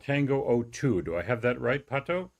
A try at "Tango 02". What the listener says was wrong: Well, in English, yes, but we pronounce it in Spanish, man. It's Tango 02.